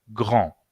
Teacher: Grand termina con D en masculino y ese D no se pronuncia